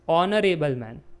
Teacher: even though it starts with H but that H is silent in speaking. While speaking we say honorable man.